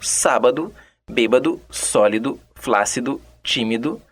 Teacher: com ênfase na antepenúltima sílaba e com a repetição do do no final de cada palavra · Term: proparoxítonas